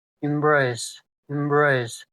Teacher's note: It is a two syllable word and the stress is on the second syllable.